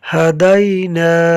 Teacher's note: ہدینا، ہا کو حرکات کی وجہ سے نہیں کھینچا، دال کو یا لین کی وجہ سے نہیں کھینچا، نون کو الف مدہ کی وجہ سے کھینچا ہے